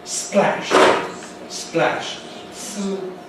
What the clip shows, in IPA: splæʃ